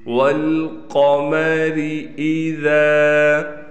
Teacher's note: قاف کو پر کر کے پڑھیں گے، را کو باریک پڑھیں گے · حمزہ کو واضح پڑھنا ہے، ذال کے بعد الف ہونے کی وجہ سے ذال کو ہم ایک الف کے برابر کھینچیں گے